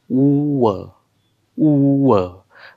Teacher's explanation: याचा उच्चार करत असताना तोंडाचा चंबू केलेला आहे उ व उ व म्हणजे दोन्ही ओठांचा वापर करावा लागतो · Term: अर्ध स्वर